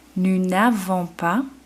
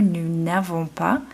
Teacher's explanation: the S does not slide into the A anymore because we have our N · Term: liaison disappeared